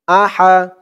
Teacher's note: হার উচ্চারণটা গলার ভিতর থেকে চিকুন হয়ে আসবে